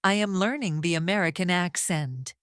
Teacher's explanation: Notice how the voice goes slightly up on learning and slightly down on accent. This up and down melody is what makes English sound smooth. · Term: natural melody